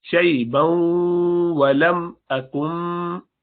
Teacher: شیبا ولم اکم، نون ساکنہ ہے، اس کے بعد با آیا، نون ساکنہ کے بعد با آئے تو قلب کرتے ہیں، یعنی اقلاب کرتے ہیں، اس کو بدل دیتے ہیں، تو یہ بدل جاتا ہے، تو نون ساکنہ کو میم بنا دیں گے، آگے با ہے